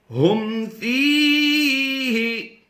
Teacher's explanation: پھر پڑھ لیجئے الذی ہم، ہاں میم پیش، ہم کی آواز دیں گے جب بھی یاد رہے میم ساکن کے 3 قاعدے ہیں. یہاں پر اظہار شفوی کا قاعدہ ہوتا ہے، تو اظہار شفوی میں غنہ نہیں ہوتا.